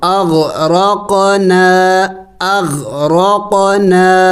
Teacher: الف مد بھی ہے، ایک الف کا مقدار لمبا کرنا ہے اور چھوٹا مد بھی ہے، تو اغرقنا اغرقنا۔